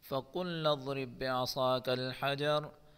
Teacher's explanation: اس را کو ہم باریک پڑھیں گے اور با میں قلقلہ کریں گے۔ اس صاد کو ہم پر پڑھیں گے حجر، اس را کو بھی ہم وقفن میں بھی پر پڑھیں گے اور اگر زبر کے ساتھ پڑھتے ہیں تو بھی اس کو پر ہی پڑھا جائے گا۔